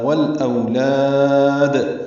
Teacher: والاولاد، لام ساکن پہ اظہار قمری، او وولین، لاد میں وقفاً لام کو لمبا کریں گے اور دال ساکن پہ قلقلہ کریں گے. ملانے کی صورت میں لا الف مدہ ہوگا، دال کی زیر کو جلدی اور معروف پڑھیں گے.